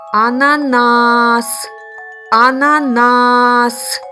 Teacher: який склад був наголошений вірно третій склад